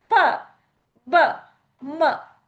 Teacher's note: the upper lip and the lower lip come in complete contact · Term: bilabial sounds